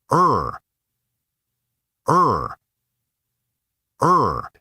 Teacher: /ʌr/ ... /ʌr/ Don't let this sound drift toward E, it shouldn't be too bright or too open. Keep it centered and steady